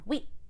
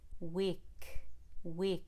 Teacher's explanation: you need to let the k come out don't swallow it but let it come forward with the back of the tongue